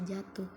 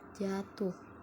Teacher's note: Indonesia tidak berfungsional dalam tetaran kata tetapi fungsional dalam tataran kalimat dalam tataran kata silaba pertama pada kata jatuh diucapkan panjang jatuh bermakna sama ketika kata itu diucapkan panjang pada silabah kedua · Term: durasi